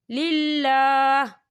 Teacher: وقف کی صورت میں ہا جو ہے وہ ساکن ہو جائے گا